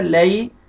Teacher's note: اپنے صحیح مخرج سے ادا کرنا ہے علی یا لین ہے یا جزم سے پہلے زبر ہے آپ نے لام کو نرمی سے ادا کرنا ہے